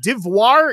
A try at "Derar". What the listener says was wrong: Derar. It's Derar. There's no V.